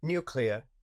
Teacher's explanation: Nuclear with a /y/ after the N.